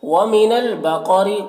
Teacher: قاف کو پر پڑھیں گے، حروف مستعلیہ میں سے، را کو باریک پڑھیں گے۔